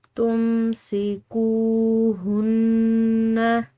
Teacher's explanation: نون مشدد، مشدد نون پر غنہ کریں گے